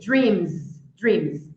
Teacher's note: vibrou a letra M vibrou então eu vou pronunciar com som de z